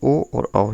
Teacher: ओ और औ ये कंठोष्ठ वर्ण है